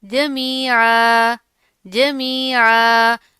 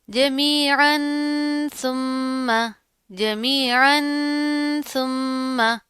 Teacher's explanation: वक्फ की सूरत में एक जबर पढ़ते हैं, एक जबर गिर जाएगी और एक जबर अलिफ के साथ मिलाकर पढ़ी जाएगी।